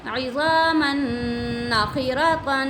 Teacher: मीम नून दो ज़बर मन, नून ज़बर ना, गुन्ना भी करेंगे क्योंकि नून मुशद्दद है